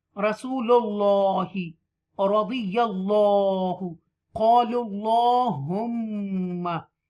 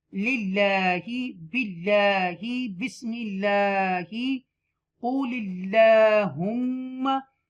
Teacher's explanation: When there is the zir before isme jalalat, we will read with the tarqeeq, softly, delicacy. Okay, we will read it softly, lightly.